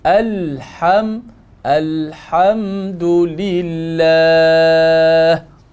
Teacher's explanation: ha tengah dia di tengah kerongkong jangan turun bawah